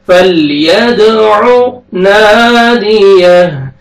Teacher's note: दाल पे कलकला करेंगे, double sound आएगा